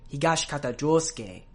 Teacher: will get deemphasized and the vowel sound become barely pronounced but it'll still not affect the rhythm of the word so that sound will still get a beat in the Rhythm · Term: whispered vowels